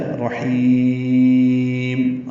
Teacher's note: ساکن ہو جائیں گی اور یہ وقف بالاسکان ہوتا ہے، رحیم، اب لمبا کر کے میم پہ ہونٹ بند ہونے چاہیے